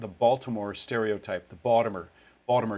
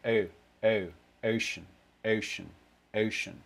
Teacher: you actually will go towards towards a schwa for the first half of it in a lot of accents